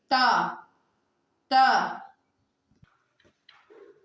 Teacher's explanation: یہ جو زبان کی نوک ہے یہ اوپر کے 2 دانتوں کے جڑ سے لگیں گے